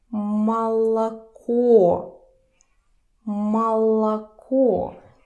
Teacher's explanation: Pay attention that only the last O is stressed.